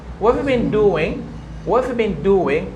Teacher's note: the word that is carrying stress are have and doing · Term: sentence stress